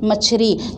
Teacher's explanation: छत्तीसगढ़ी में ल र में कन्वर्ट होता है अवधि के प्रभाव से, इसलिए मछली से बन जाती है मछरी।